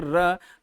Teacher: लेकिन जब आप कहेंगे र, तो वहां ना जाकर के मूर्धा तालु के पास थोड़ा सा जाकर के वापस लौटेगी, र हल्का से जाती है मूर्धा के पास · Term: अंतःस्थ वर्ण